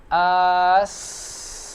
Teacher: ada suara yang mengalir, berarti dia sifatnya adalah rokhwah.